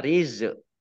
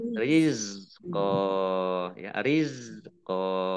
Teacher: Zak sukun bukan kolkolah. Jangan dipantulkan ya. Jangan dibaca rizq.